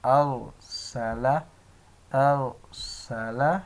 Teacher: Okay دوستو، امید کرتا ہوں آپ کو سمجھ آئے گی۔ یہ ار ہے، یہ را پر پڑھیں گے کیونکہ را ساکن سے پہلے زبر ہے تو اس کو پر پڑھیں گے